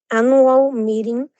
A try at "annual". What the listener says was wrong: But when you're pronouncing this, it's annual. So we don't pronounce the U very like long. It's a short A, like annual.